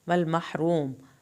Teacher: हा को हल्क से पढ़ेंगे, रा को पुर करके मीम को नहीं हिलाएंगे